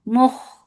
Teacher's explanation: Kha is munfatiha letter. It is musta'aliya. You are making it heavy. And there is rakhawa too.